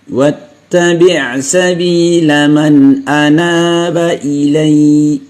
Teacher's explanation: Anaba tetap dibaca panjang 2 harokat.